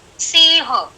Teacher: सिंह जो अनुस्वार है उसका उच्चार नाक से होना चाहिए, सिर्फ नाक से.